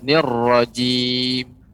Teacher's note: pengucapan jimnya agak lebih dilembutkan, ya, tidak ditekan